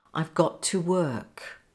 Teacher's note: Got to, two T's together, becomes one.